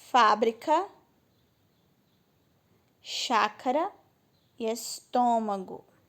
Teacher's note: Não é a última e nem a penúltima, é a antepenúltima. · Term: proparoxítona